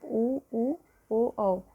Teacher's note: जिन स्वरों के उच्चारण में होठों की आकृति जो होती है वो गोल हो जाती है उन्हें वृत्ताकार स्वर कहते हैं।